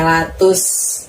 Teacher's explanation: tusnya itu jangan ditiup ya mulut kita ya. Jangan mengeluarkan angin dari dalam mulut. Sin kecil soalnya latus.